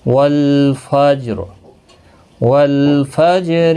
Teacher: لام ساکن کو ہلانا نہیں، جیم پر قلقلہ ہوگا، را پر پڑھا جائے گا، وقف کی صورت میں پر پڑھا جائے گا، ملانے کی صورت میں باریک پڑھا جائے گا۔